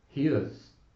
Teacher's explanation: There can also be two syllables pronounced, but with no stress on the word is, which makes its vowel become very weak and reduced in duration. It's what we call a schwa sound, and the IPA representation is like this. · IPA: [hi əz]